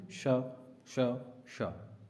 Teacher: महाप्राण है श, क्योंकि जो हवा है वो अधिक बाहर निकलती है, इसलिए इसको हम महाप्राण बोलते हैं।